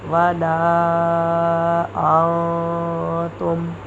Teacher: نون ساکن کے بعد حروف اخفا میں سے تا آ رہا ہے تو یہاں ہم نون ساکن کی آواز کو چھپائیں گے